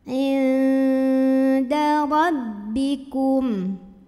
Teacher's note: Inda, ada ikhfa aqrab karena ada nun sukun yang ketemu sama huruf dal. Maka nun sukunnya dibunyikan samar-samar menuju huruf dal disertai dengungan. Nah ini dengungnya kecil karena huruf dal makhrajnya dekat dengan nun.